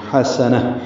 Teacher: ہوئے اس کو ہا میں تبدیل کر کے پڑھیں گے، حسنہ، ہا وسط حلق سے اور سین دونوں جلدی پڑھیں گے